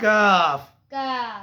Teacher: کیاف نہیں ہے، یہ باریک کاف ہے